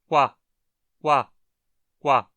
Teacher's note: Preste atenção ao falar quadro. Você já começa com os lábios arredondados e a transição é direta para um A. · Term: oclusivas velares labializadas